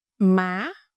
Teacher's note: The second one is sắc, is a rising voice.